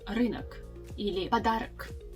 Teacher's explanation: the o that's actually at the end of the word in nominative case, we don't really pronounce it like wide o. It's more like half a sound of the o. If you рынок или подарок, yeah, it's not подарок or рынок, yeah, and this short o sound disappears when we actually change the form of this noun in genitive case.